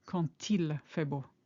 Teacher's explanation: And you notice that with the quand, we link as if it were a T. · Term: liaison